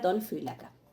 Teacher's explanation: En origen esto es algo así como phylaknu, que dijimos que eso los griegos no lo toleran en esa pronunciación, entonces lo que hacen es vocalizar, o sea, se vocaliza esa nu en una alfa breve, y por eso me queda ton phylaca. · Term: nu vocalizada